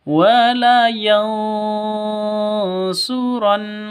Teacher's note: Nun mati atau nun sukun bertemu dengan shad. Samar, didengungkan, siap-siap ke huruf shadnya. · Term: Ikhfa hakiki